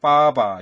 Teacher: 뭐 예를 들어가지고 그다음에 빠바 이런 거 윗입술 아랫입술 떨어지면 발음 안 되죠. 윗입술하고 아랫입술 서로 붙어야지 나는 소리다. 그래서 양순음이라고 그래요.